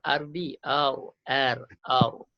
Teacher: huruf ra tu hati-hati, tebalkan jangan nipiskan